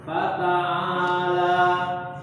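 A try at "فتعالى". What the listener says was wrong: Huruf ta-nya jangan tebal ya. Fata'ata. Ta, tipis ya. Fata, coba fata. Huruf ain itu tipis ya. Fa, ini semua tipis semua hurufnya nih. Fata'a, paling enak seperti ini bacanya. Fata'ala. Nah itulah. Fata'ala. Tipis semua. Jangan balik-balikin, biarin karena posisinya tipis semua.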